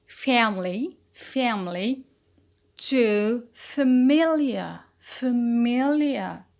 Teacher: the stress shifted from fa to me. So we notice a vowel quality change from fa to fe. Fa in family to fe in familiar.